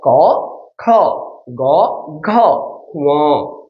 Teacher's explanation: ম একটু হালকা নাক দিয়ে যাবে, সেজন্য এটাকে বলা হচ্ছে নাসিক্য।